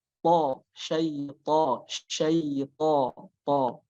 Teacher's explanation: Nah, yang banyak terjadi kesalahan adalah di sifatnya, yaitu to memiliki sifat yang tebal ya, atau dinamakan isti'la. Dia harus tebal.